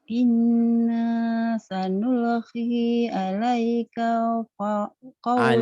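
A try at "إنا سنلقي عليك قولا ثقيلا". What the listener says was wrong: Alaika koknya pendek ya. Alaika qaula. Inna sanulqi alaika qawlan thaqila. Inna inna sanul inna sanulqi alaika alaika qawlan thaqila.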